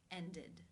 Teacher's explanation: Therefore, it is case 3, ended, where the ed is pronounced with the I as in sit and the d sound